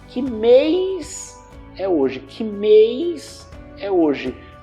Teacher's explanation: A gente fala com o I antes do S. · Então, quando uma palavra termina com S, S tônico, uma sílaba tônica, neste caso, a gente tende a pronunciar com I.